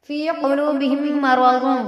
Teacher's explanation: تشدید ہے، غنہ ہوگا، یعنی ناک میں تھوڑی دیر آواز کو روکیں گے